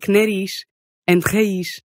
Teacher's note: at the ends of words, if you see a Z, you're going to make an unvoiced SH sound.